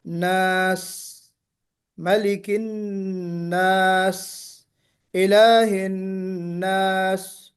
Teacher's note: یعنی سین کو نکالتے ہوئے ہمیں سیٹی کی آواز آنی چاہیے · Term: صفیر